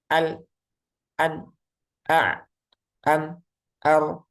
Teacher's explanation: Di pengucapannya itu antara syiddah dan rokhawah. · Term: bainiyah